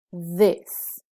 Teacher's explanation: that's the buzzing th sound in the word this